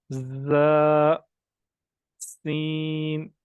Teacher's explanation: जुबान का किनारा नीचे वाले दांतों पे रखेंगे, और दोनों जी दांत बंद करके रखेंगे जोड़ के